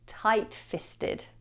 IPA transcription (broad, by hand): ˌtaɪt ˈfɪstəd